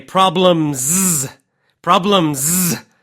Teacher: really make that Z that that last part of the word the plural the S this case it's kind of a z sound